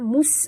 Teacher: Amrin mustaqir, ya, mus bunyikan safir pada huruf sin yang mati